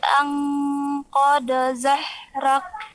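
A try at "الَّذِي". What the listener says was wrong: Ummu membaca huruf ha kecil. Yang betul ha besar. Yang Ummu baca itu ha kecil, yang betul di situ ha besar.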